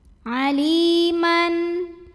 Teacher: Aliman, ada idhar halqi karena ada tanwin fathah yang bertemu dengan huruf halqi yaitu ha, huruf tenggorokan ya, maka tanwinnya ini kita bunyikan dengan jelas, bunyi n.